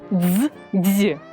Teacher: д з приголосний твердий звук а ДЗ - приголосний м'який звук звук ДЗ складний він злитий із двох звуків д і з